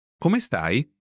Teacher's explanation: Note the rising intonation to mark that it's a question.